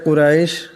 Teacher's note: কুরাইশ, এখানে রার উপর জবর আছে, ইরাকে মোটা আওয়াজে পড়তে হবে।